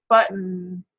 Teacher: that second part is just that n sound, and that's what we mean by a syllabic sound